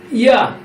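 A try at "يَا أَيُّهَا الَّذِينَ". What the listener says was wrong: হুম, ইয়া বলা হবে না, ইয়া বলা হবে না, তিন আলিফ মাদ করতে হবে।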